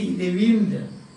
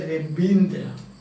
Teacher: in Bengalis, when they pronounce English, instead of a V, they use B. The B sound is very prominent.